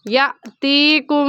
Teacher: یَأْتِیکُم میں حمزہ ساکن ہے اور حمزہ ساکن پر جھٹکا دیتے ہیں، تو جھٹکا دیں گے یَأْتِیکُم، کم پر غنہ کریں گے کیونکہ میم ساکن کے بعد با آ گیا ہے۔